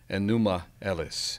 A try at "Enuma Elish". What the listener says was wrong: Elish, Elish, usually transliterated with an H on the end, Enuma Elish.